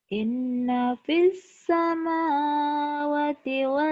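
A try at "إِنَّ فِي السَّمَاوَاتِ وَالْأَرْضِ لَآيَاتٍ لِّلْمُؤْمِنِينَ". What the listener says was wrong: Wanya panjang, sama wa panjang kan ada madnya. wal ardi la'a. la'ayatil. Jangan la'awa. Inna fis samawati wal ardi laayatil lil mu'minin.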